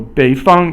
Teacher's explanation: 北 is 三 声, and 方 is 一 声. 三 声 is falling and then rising, and then 一 声 is just the flat tone again.